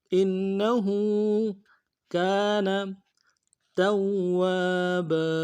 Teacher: یہاں پہ واو کے اوپر تشدید ہے، زور دیں گے اور واو کے بعد الف مدہ ایک الف دال میں کھینچیں گے